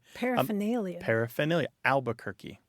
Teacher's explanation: that first R is gone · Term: r dissimilation